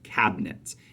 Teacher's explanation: it's a two-syllable word we stress the cab not the Nets